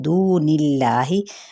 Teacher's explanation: दू पे वाव मद्दा है और इसमें जलाला का लाम बारीक पढ़ जाएगा क्योंकि पीछे नून पे ज़ेर है